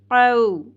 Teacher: واو حرف لین تھا، نرمی سے ادا ہوا